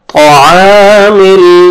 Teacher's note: और तौ को मोटा करके पढ़ेंगे, आइन को आपने खींचना है, अलिफ मद्दा है, 1 अलिफ के बराबर खींचना है।